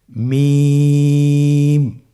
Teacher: মিম হরফটি উচ্চারণের ক্ষেত্রে অবশ্যই বারিক হবে, পাতলা হবে এবং তিন আলিফ টেনে উচ্চারণ করতে হবে।